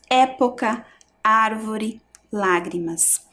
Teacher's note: Também são palavras em que a sílaba tônica é a antepenúltima, ou seja, são proparoxítonas.